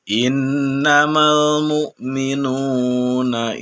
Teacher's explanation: cara membacanya yaitu dengan ditahan sebanyak 2 harokat kemudian sampai dengan terasa dalam hidung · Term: bacaan ghunnah